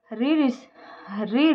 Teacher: ऋषि का वर्तमान उच्चारण र प्लस इ इक्वल ऋ होने लगा है तथा इसका उच्चारण करते समय जीवा मूर्धा को स्पर्श करती है